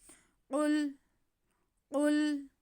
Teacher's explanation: قاف پہ پیش اور لام ساکن، قاف حروف مستعلیہ ہے، اسے ہم موٹا کر کے پڑھیں گے۔